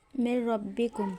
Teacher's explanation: نون گر جاتا ہے اور میم کو را سے ملاتے ہیں، میم را سے من ربکم، اس میں غنہ ہوتا ہے۔ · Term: ادغام تام بلا غنہ